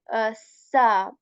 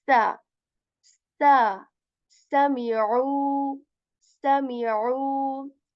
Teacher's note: this sa has this whistle sound in it, and air comes out of your mouth when you say sa.